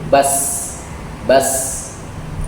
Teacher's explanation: Sama hurufnya secara makhraj dengan zai dan sad. Jadi zai sin sad itu satu makhraj. Ujung lidah dengan gigi seri bawah.